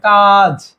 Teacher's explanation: বাংলায় একাক্ষরে আ হচ্ছে দীর্ঘ হয়